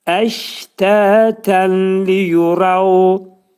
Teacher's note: Ağız nunun tənvindəki nun səsi ləmə yetişir və burada idğam olur. Nun ləmə çevrilir. Bilagunnə olur. Yəni bu artıq ağız boşluğunda deyiləcək.